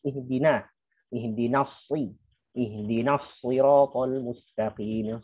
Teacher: Yang tebal yang huruf shad dan huruf ta. Nunnya tipis.